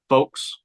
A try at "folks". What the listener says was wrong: So you got no L in there. Folk. You're just saying Folks. Am I saying it different than you? On the L. Folks. I thought that's how you said it.